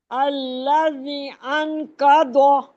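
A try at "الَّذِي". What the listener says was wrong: अल्लज़ी, ये या मद्दा भी है और ऊपर मद भी है, इसको थोड़ा खींचना पड़ेगा ना।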